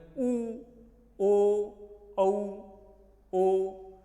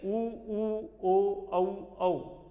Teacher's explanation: जैसे ही हमने ऊ बोला तो हमारे होंठ गोल हो गए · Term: वृत्तमुखी